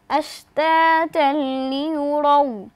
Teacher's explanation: তানবিনের বামে লাম এসেছে অর্থাৎ ইদগামে বেলা গুন্নার হরফ আমরা গুন্নাহ ছাড়া মিলিয়ে পড়ব।